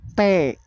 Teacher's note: bunyi t nah dihambat oleh lidah dikenakan ke ujung gigi